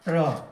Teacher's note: त्र, त जोड़ र बराबर त्र, तो त्र का उच्चारण स्थान कहाँ है? तो त का उच्चारण स्थान हम देखते हैं यहाँ त, दंत, और र का उच्चारण स्थान मूर्धा, तो दंत मूर्धा